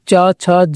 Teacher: च, छ, ज ह जो है स्पर्श संघर्षी व्यंजन की ध्वनियां कहलाती हैं